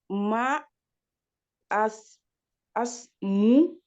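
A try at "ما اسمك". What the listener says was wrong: alors ici, on prononce pas le elif, hein, c'est masmouk. Masmouk.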